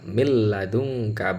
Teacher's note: nun sukun atau tanwin itu harus masuk sepenuhnya kepada huruf lam dan roknya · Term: Idgham bilagunnah